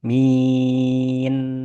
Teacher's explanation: nun sukun itu tidak boleh ditempel bibirnya. Ketika bacaannya ditempel bibirnya, maka akan berubah dari makhraj nun ke makhraj mim. Contohnya, Alhamdulillahi Rabbil Alamin.